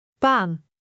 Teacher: Paan is not a Dutch word, but if it were, the aa would make it sound longer.